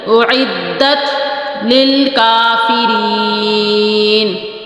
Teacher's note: پیش کھینچنا نہیں ہے، حمزہ پیش او، بس اتنی آواز آئے، او نہیں کرنا ہے.